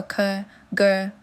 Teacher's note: Our tongue back contacts the soft palate for ker, gur, and the ngur sound.